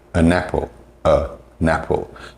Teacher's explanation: link together to become next to almost like one word and even something as simple as an apple when you hear people say it it will sound like a napple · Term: connected speech